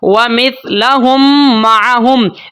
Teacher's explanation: जब भी इस तरह से मीम साकिन के बाद अगली फिर एक मीम आ जाती है, दोनों मीम को मिला दिया जाता है, दोनों मीम को मिला के एक मीम पढ़नी होती है गुन्ने के साथ, और इस मिलाने को हम बोलते हैं इदगाम शफ़वी।